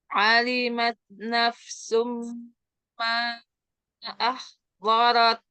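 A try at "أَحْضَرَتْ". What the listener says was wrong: Bo ya. Bo naik ya, jangan cuma dorot, tapi bo. Bo. Ahdarat. Ahdarat.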